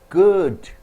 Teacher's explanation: G is produced from your throat. Vibration is there.